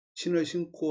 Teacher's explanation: 용언의 어간이 비음으로 끝나고 뒤에 오는 어미가 예삿소리 시작하면 예삿소리가 된소리로 바뀐다. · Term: 된소리 대기